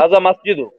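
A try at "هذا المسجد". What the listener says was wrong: আল মসজিদ, আলিফ লাম আছে, আর লামটা উচ্চারণ হবে।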